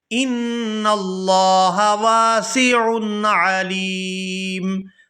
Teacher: یہاں پر لفظ اللہ کے لام کو پورا ادا کریں گے کیونکہ لفظ اللہ کے لام سے پہلے زبر ہے۔ ان اللہ واسع علیم، یہاں پر وقف کریں گے تو وقف کی صورت میں میم جو ہے یہ ساکن ہو جائے گی۔